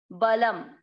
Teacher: पहला चरण ब और ल पूरे पूरे अक्षर दोनों में अमिक्स करेंगे। ब ल शब्द पूरा होने के बाद अनुस्वार आधा म